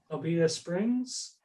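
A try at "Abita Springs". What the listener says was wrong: Albeita. There's no L.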